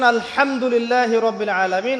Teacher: এই হা এর মাখরাজ কোথায়? হা এর মাখরাজ কোথায় বলেন একজন? কণ্ঠনালীর মাঝখান থেকে। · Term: হায়ে হুত্তি